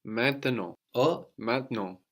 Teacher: You can hear that E in the middle of maintenant getting totally disappeared